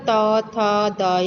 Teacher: उसके बाद है दंत्य, जिनका उच्चारण दांतों से होता है, त, थ, द, यानी हमारी जीवा दांतों को स्पर्श करती है तो दंत्य व्यंजन है